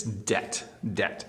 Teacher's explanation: do not pronounce the B, just don't. It's debt, debt.